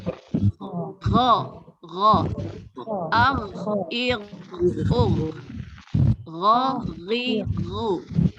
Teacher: Sama. Bedanya, ghain buka mulutnya sedikit, ada gesekan.